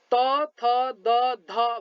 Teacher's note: त, थ, द, ध भन्दाखेरि जिब्राको टुप्पाले दाँतलाई छुन्छ हो। यी त, थ, द, ध 4 वटा वर्णहरू चाहिँ दन्त्य वर्णहरू हुन्। · जिब्राको टुप्पाले दाँतलाई छोएर उच्चारित हुने वर्णलाई दन्त्य वर्ण भनिन्छ।